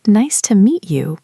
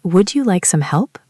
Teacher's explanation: This is where 2 sounds collide to make a new sound. Usually a T or D plus a Y sound becomes a ch or ja sound. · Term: assimilation